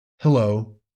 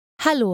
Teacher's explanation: people have a tendency to reduce that e vowel hello but in German to my ear they tend to fully pronounce it